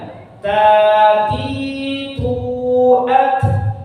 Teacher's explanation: huruf ta ada sifat hamasnya, jadi ada anginnya sedikit, enggak putus dia · Kemudian yang kedua huruf lisan, lidah, ujung lidah bertemu dengan pangkal gigi atas ditempelkan.